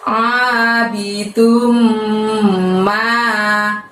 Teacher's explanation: Nah, yang berikutnya ini mulut tidak usah dibuka lebar karena keluarkan suaranya hanya dari tenggorokan bagian tengah ya. Abidum, dum di situ kita tahan selama 2 harokat ya, jangan terburu-buru.